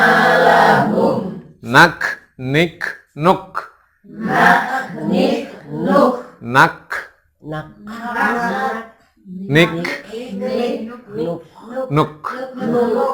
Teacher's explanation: kaf itu kalau mati dia ada nafas keluar. [Musik] Gak nik.